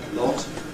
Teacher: it does have rounding of the lips but because the jaw is pretty open, this is not very noticeable rounding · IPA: /lɒt/